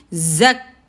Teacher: رک جاتی ہے، تو بزنگ کے ساتھ زیادہ ہوگا، کاف کے اوپر آواز رک جائے گی، زک، آواز رک گئی، زک، اس کے کاف کے اوپر زبر، آگے کھڑی زبر، الف مد 2 کاؤنٹس.